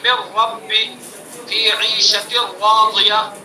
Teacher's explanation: دوسرا موقع نون ساکن اور تنوین کا ادغام را میں، جیسے من رب فی عیشۃ راضیہ، یہ بھی ادغام تام ہے. ٹھیک ہے، نون اور را کا مخرج قریب قریب ہے تو نون کا را میں ادغام کیا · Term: ادغام متقارب